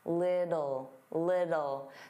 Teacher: native speakers, including me, generally pronounce the T's as soft D's